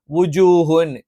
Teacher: ജ നാവിന്റെ മധ്യവും മേലെ എണ്ണാക്കുയാണ്